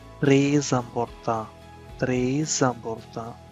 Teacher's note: The S at the end of a word may be pushed into the following word if it starts with a vowel and it takes a sound of an Z or a C.